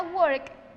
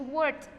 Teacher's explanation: Para work, que termina en K, el sonido es worked, con una T al final